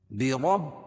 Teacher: برب، اور با کے اوپر تشدید ہے، تشدید والا حرف 2 مرتبہ پڑھا جاتا ہے اور سختے کے ساتھ، را کو با میں ملائیں گے اور با کو اس لام میں ملائیں گے۔